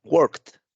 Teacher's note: la R pues es muy sutil en la palabra, se oye muy bajita · yo no pronuncio ni la E ni la D. De hecho, lo que pronuncio es una T